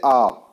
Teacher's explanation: जिनके उच्चारण में मुख पूरा खुलता है उनको विवृत बोलते हैं